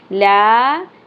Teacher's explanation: लाम की ज़बर के साथ अलिफ हरफ मद्दा 1 अलिफ के बराबर खींचना है।